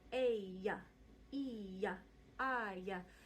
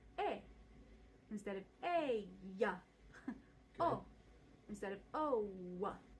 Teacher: we use an open vowel, so we sort of freeze our lips in the beginning position of the vowel